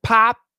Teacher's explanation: typically we stop the sound as we start it so pop we go right to the p and then stop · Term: stop the sounds